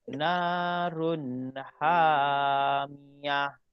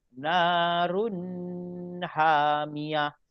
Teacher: Run kena baca jelas. Dan run ini tidak boleh didengung. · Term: izhar halqi